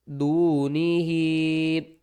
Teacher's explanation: ہا مد کھڑی زیر ہی، چھوٹی مد ہے، 3 الف کی مقدار کھینچ کر پڑھیں گے۔